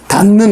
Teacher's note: 디귿하고 니은이 만났어요. 그러면 디귿은 니은으로 바뀌어요. 그래서 니은으로 바뀌고 느는 그대로 오면 되죠.